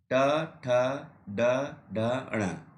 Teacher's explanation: तीसरा वर्ग है ट वर्ग, ट ठ ड ढ ण, इसको बोलते हैं मूर्धा वर्ग। जो इसका उच्चारण स्थान है वो है मूर्धा, यानी मूर्धन्य